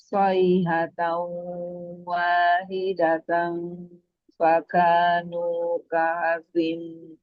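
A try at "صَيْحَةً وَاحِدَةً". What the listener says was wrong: Huruf H-nya, Bunda. Coba. Ha. Sayhatau. Sempitkan tenggorokannya. Ha. Wahidatau. Sayhatau wahidatan. Sayhatau wa. Ini hukumnya apa, Bu? Idgham. Kalau idgham masuk ke matnya waw. Sayhatau wa. Jangan tahu, tapi tahu maju bibirnya, benar-benar. Wow itu maju, bukan au. Ini bukan wow. Jadi au.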